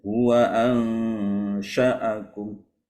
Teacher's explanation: Jadi itu menjadi pendek ya, bukan lagi mat, itu ada hamzah di situ.